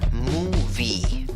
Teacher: En la primera sílaba tienes una U larga con trompita.